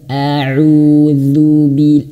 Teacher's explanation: Auzu dza lidahnya digigit dza